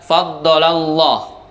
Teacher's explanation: Lafdzul jalalah di sini dibaca tafkhim atau dibaca tebal atau dibaca o